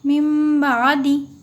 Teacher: نون کی آواز کو میم کی آواز سے بدل کر غنہ اور اخفا کے ساتھ پڑھیں گے، اس کو اقلاب کہتے ہیں۔